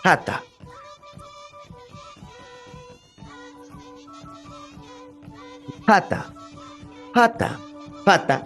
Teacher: es la letra p pero con un soplido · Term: oclusiva aspirada